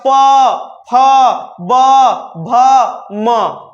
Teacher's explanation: देखिएगा होठ आपका सट रहा होगा, तो प वर्ग का उच्चारण स्थान ओष्ठ · तो प वर्ग का उच्चारण स्थान ओष्ठ, होठ होता है